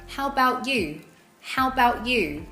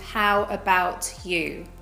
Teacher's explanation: You might even hear it with the A in about being cut off as well.